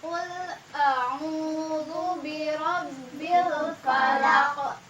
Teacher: qafnya itu diwakafkan jadi menjadi hukum tajwid qalqalah kubra. Jadi membacanya itu harus dipantulkan. Birabbil falaq kayak gitu ya.